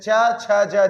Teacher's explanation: तालू से जैसे च छ ज जितने भी आएंगे वो तालू से बोला जाएगा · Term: तालू स्थान